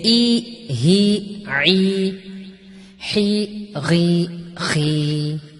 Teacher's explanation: حلق سے نکلے ای ہی عی، حی غی خی